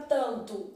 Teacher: na palavra tanto o n não emite som